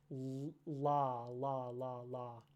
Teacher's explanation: air flow is pushed to one side instead of being reduced to sort of the center of of the vocal tract. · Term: lateral